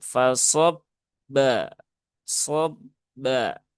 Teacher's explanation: Jadi fasob ba shob ba ya bukan ee bnya jangan sampai ee ada aliran karena huruf ba dia sifatnya bukan rakhawah tetapi dia sifatnya syiddah